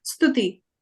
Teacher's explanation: So it's half the S sound, so Stuti, S-T-U, and that is softer, it's a softer T and it's shorter U. Ooh, so Stuti.